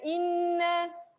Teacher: Nun yang bertanda sabdu. Ini dengung. Yang ni kena lama lagi.